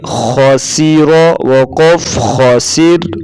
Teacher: خا اور را کو پر پڑھیں گے